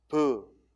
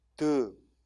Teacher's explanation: 이건 외울 게 아니라 소리를 내보면 알 수 있다고 그랬어요. 자, 브 무슨 소리겠어? 입술 소리고 드 무슨 소리겠어? 혀끝 소리고